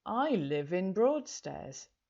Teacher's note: We link those two words together because we've got the v sound at the end of live before the vowel sound of in, so you hear it more clearly.